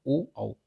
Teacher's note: कंठोष्ठ कौन से हैं, ओ औ, इनमें कंठ और ओष्ठ दोनों का प्रयोग होता है